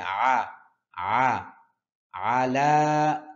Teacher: আইন কণ্ঠনালীর মধ্যখান থেকে